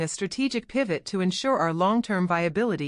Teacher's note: Notice how I squeezed to ensure our into one quick sound, while I stretched out strategic pivot.